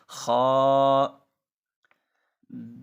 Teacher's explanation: یہ ابتدائی حلق سے ادا ہوگا، حلق کے اوپر والے حصے سے جو حصہ منہ کے قریب ہے۔ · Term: حروف حلقیہ